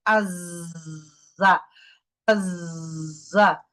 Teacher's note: জিহ্বার নিচের দাঁতের গোড়ায় থাকবে এবং এটাকে বাজিং সাউন্ড দিতে হবে।